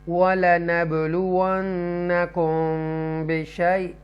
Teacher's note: یہاں میم ساکنہ کے بعد با آ رہا ہے تو یہاں پہ گنہ کریں گے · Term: اخفاء شفوی